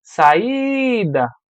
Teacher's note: qual é a parte mais forte? É o I, foi onde eu passei mais tempo. Então, ela é uma paroxítono pela classificação, mas mais importante do que isso, ela é um hiato.